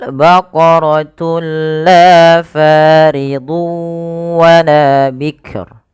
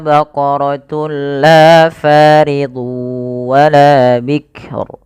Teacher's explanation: Kita baca dengan bacaan idgham bila gunnah, yaitu dengan cara memasukkan tunnya kepada lam dan diganti bunyi suara nunnya menjadi suara lam. Baqaratul la, tapi tidak ditahan.